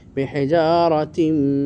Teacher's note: তাম গায়ের না আঁকেছে ইদগাম তাম কারণ তানমিনের পর মিম এসেছে তানমিনটা মিমের সাথে সন্ধি হয়ে পড়তেছি